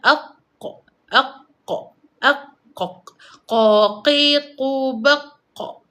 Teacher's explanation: Ingat, qaf muncung, kaf senyum. Bila anak tekak kita terkena dengan pangkal lidah, maka sebutan huruf qaf akan tepat.